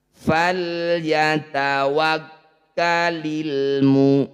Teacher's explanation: Cara membacanya, bunyi lam sukun ini harus jelas. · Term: izhar qamari, izhar qamariyah